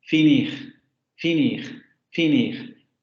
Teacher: se va a cerrar tanto como se puede con las vocales y no va a haber labialización. La vocal I del español.